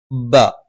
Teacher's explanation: രണ്ട് ചുണ്ടിൽ നിന്നാണ് മേലെ ചുണ്ട് അല്പം പുറത്തേക്കും താഴെ ചുണ്ട് അല്പം ഉള്ളിലേക്കും കയറി നിൽക്കും